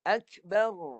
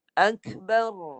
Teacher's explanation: Yang tebal pun ada, getaran pun ada, bunyi lencong pada hujung lidah yang melengkung pun ada, tawassut, suara yang terlepas pertengahan pun ada. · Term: bunyi r